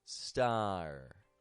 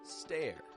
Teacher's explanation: That vowel, whether it's an I or an E, is changing the sound of A to go A, making a tense A sound instead of a lax A